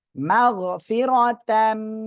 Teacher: দুই জবর তাম গুন্নার সাথে মিলিয়ে পড়তে হবে